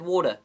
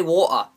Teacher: that's two syllables with a grunt in between them